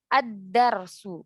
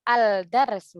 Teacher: Lamnya tidak dibaca, langsung masuk ke huruf setelahnya, setelah huruf lam maksudnya. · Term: syamsiyah